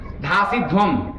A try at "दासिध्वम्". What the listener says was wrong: हाँ, ठीक बोला।